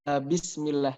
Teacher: bismillah itu sin sukun, ada yang namanya sifat rokhawah. Jadi mengalir dulu suaranya.